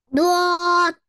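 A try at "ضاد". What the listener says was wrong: दौद नहीं, लौद. हाँ, जुबान का लेफ्ट हिस्सा मुंह की छत के लेफ्ट साइड पे लगेगा, लौद.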